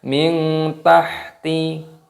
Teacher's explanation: Tajri min tahtihal, nun sukun bertemu dengan huruf ta, hukumnya dibaca ikhfa. Cara membacanya disamarkan.